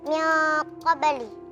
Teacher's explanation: karena nun sukun bertemu dengan huruf qof. Hukumnya ikhfa hakiki. Dibaca samar disertai dengung.